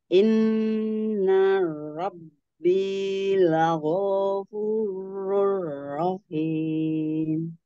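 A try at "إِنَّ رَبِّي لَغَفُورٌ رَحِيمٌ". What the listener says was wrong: Golnya jangan panjang, lagofu yang panjang fu-nya aja ya. Inna Robbi lagofurur rahim.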